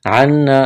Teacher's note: عنا نون مشدد ہے، غنہ کریں گے، الف مدہ ہے